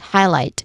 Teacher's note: When it comes to pronunciation, it starts with highlight, which has two syllables. First syllable is high, which has a clear I diphthong sound, and then light, still with clear I diphthong sound. Highlight. Now the stressed syllable here is on the second syllable, light.